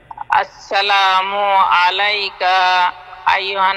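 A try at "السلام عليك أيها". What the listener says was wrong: আসসালামু আলাইকা, কাফের মধ্যে টান পড়ে গেছে।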